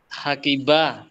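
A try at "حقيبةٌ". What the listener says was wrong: Baca semua. Dibaca semua.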